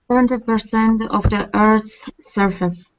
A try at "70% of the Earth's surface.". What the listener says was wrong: Good job. Good.